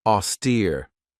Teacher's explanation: This has two syllables and the stress is on that second syllable with that long e sound.